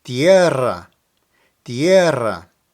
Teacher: First, emphasize the E and trill the R.